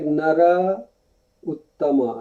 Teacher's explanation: A when joined with U, it will become O in Sanskrit.